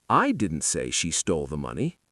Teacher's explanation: stress on I suggests someone else did like Jim.